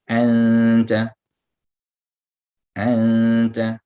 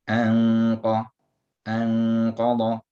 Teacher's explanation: In anta, the ikhfa is flat. In anqa, the ikhfa is full.